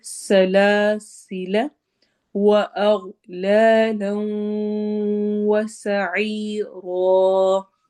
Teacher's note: سین میں سیٹی والی آواز ہوگی